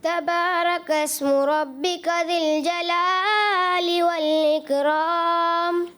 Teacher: را کو تھوڑا سا پر کرنا تھا، باریک کیا